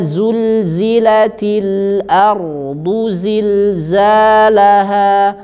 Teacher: makhrajnya sama di ujung lidah dengan gigi seri bawah tetapi ada suara Getaran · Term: huruf Zai